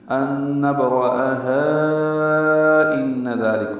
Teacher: ملانے کی صورت میں یہ الف مدہ ہے ہا اور اس کے بعد حمزہ دوسرے کلمے میں آیا تو یہاں پہ مد منفصل بنے گی، ان نبرأہا ان ذالک ہوگا۔ ان میں نون مشدد پہ غنہ ہے، ذال کو نرمی سے ادا کرنا ہے، 2 حرکات لمبا کرنا ہے، لام کاف باریک ہے۔